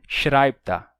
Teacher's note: Por isso, se você fosse dizer agora ele escreve um novo livro, que ficaria literalmente agora escreve ele um novo livro, vai ter a união de schreibt er, ou seja, escreve ele, e os dois ficam juntos e se pronunciam schreibt er